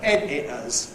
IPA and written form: ˈedɪʔəz (editors)